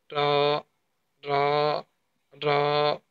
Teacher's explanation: যেটাকে মূর্ধা বলা হয়, সেখান থেকে র উচ্চারিত হবে।